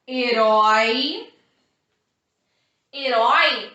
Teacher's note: a última sílaba é um ditongo aberto, então é uma oxítona. Eu mantenho o acento.